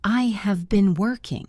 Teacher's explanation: Notice how the words have and been almost blend together. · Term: connected speech